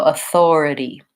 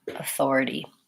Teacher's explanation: we have a vowel I, flap T, sounds like a light D, and our E vowel